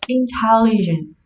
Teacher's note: Intelligent trọng âm sẽ rơi vào âm tiết thứ hai